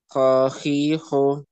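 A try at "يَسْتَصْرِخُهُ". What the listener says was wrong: Nah, sudah ada, tinggal lebih kuat lagi hurufnya. Khakhihu. Nah, masih belum kuat itu huruf kho-nya. Dikuatkan lagi insyaallah ya.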